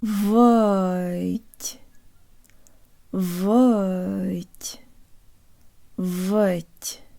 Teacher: the tongue rises at the last second and that rise can be heard at the very end of the syllable